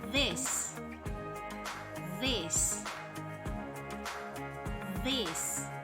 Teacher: voiced fricative made by putting your tongue between your teeth